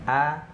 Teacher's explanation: Huruf hamzah itu keluarnya dari tenggorokan bagian bawah di pita suara.